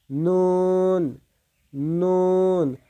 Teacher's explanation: নুনের ক্ষেত্রে জিহ্বার আগা উপরের দাঁতের গোড়ার সঙ্গে লাগিয়ে উচ্চারিত হবে